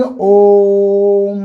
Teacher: प्लुत स्वर दीर्घ स्वर से भी ज्यादा समय लेता है